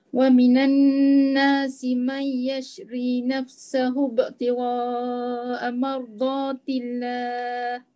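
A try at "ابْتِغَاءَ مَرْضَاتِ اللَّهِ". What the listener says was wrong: Berapa harakat ibtigha' tu? Macam 4.5. Macam 4.5. Panjangkan lagi.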